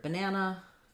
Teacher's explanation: it's short long short